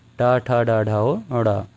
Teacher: टा वर्ग की बात करें दोस्तों तो इसका उच्चारण स्थान मूर्धा है।